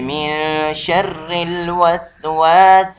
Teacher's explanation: را پر زیر آ گیا ہے تو اس وجہ سے را باریک پڑھا جائے گا